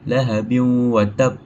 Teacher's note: hukum membacanya adalah dengung dan dimasukkan dalam huruf wau. Maksudnya lahabi ada wau dia kita dimasukkanlah ke dalam huruf wau tu dan ditahan dalam dua harakat. · Dalam kes ni kita jumpa huruf tanwin bertemu dengan huruf waw. So hukum membacanya adalah dengung dan dimasukkan dalam huruf waw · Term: idgham ma'al gunnah